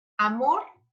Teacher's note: la sílaba tónica recae en la última sílaba · No necesariamente van a tener el acento para que sean agudas, pero sí nosotros vamos a identificarlo porque la sílaba tónica o la carga de voz va en la última sílaba